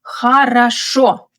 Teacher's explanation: And khorosho, the stress is on the final syllable.